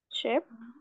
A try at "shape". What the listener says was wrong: shape. So it's not sheep, but shape.